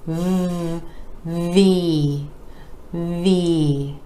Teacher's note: where the top teeth are connecting with the bottom lip move our vocal cords are engaging for the voiced v